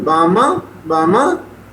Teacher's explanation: He is saying Baba, but sound is being produced for me, Bama, Bama. Nasal element become too much. And this hypernasality of voice is also called as rhinolalia aperta.